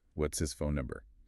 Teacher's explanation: the word is has practically evaporated, leaving only the sound of its final consonant, the es, to bridge the gap.